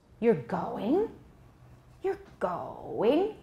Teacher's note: pitch though sometimes it goes lower right you're going you're going the stress is on go but did it go high no it went very low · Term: sharp decrease